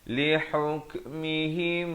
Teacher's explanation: Ha berkasrah bunyi hi bukan he.